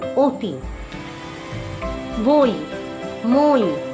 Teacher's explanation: একটু ছোট সংবৃত অ হবে